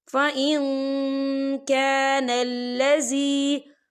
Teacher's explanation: या देखिए फ़इन, यहाँ नून साकिन है, नून साकिन के बाद जो है काफ आ रहा है और काफ जो है इक्फा का वर्ड है, तो हम यहाँ इक्फा करेंगे, नून साकिन की आवाज़ को नाक में छुपाएंगे।